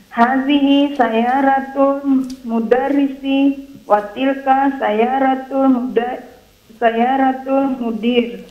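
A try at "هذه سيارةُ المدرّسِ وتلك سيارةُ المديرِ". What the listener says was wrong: Sayaratul dimasukkan ke alif lam. Sayaratul mudarisi. Sayaratul mudiri.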